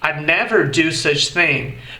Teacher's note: Repetindo, I'd never do such thing. Percebeu como o som do D, nesse caso, quando a gente embute I com would numa frase, fica bem sutil?